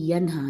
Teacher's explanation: نون کا یہاں پہ غنہ نہیں کرنا کیونکہ یہاں پہ اظہار ہو رہا ہے نون کا